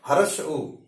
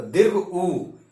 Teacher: जैसे मैं अभी हरस्सु बोलने जा रहा हूं, आप मेरे ओष्ठ पर ध्यान देंगे, हर्ष उ, विशेष प्रकार का कोई परिवर्तन नहीं हुआ, मुंह खुला, थोड़ा सा परिवर्तन आया, हर्ष उ। लेकिन अगर मैं दीर्घ उ का उच्चारण करूंगा तो दीर्घ उ, यानी ओष्ठ आगे बढ़ रहा है।